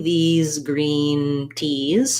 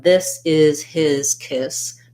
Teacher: the vowel is going to be held longer as well because of that z sound